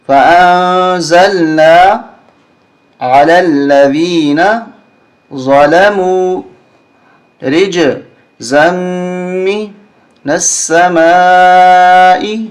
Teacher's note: اس مد کو 4 الف تک ہمیں کھینچنا ہے، یہ مد متصل ہے